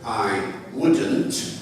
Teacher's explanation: the T at the end disappears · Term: Elision